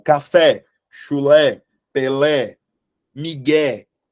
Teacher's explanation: essas palavras Elas têm como sílaba tônica a última sílaba portanto elas são oxítonas tá Quando vocês tiverem essa dúvida na